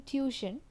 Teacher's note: The first T is pronounced as T and the second T is pronounced as Sh in tuition